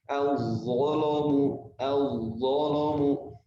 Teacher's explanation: Al-zalamu kan huruf sebelumnya adalah huruf zo, huruf tebal. Maka lamnya menjadi tebal untuk qiraat yang lain. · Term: lam yang dibaca tebal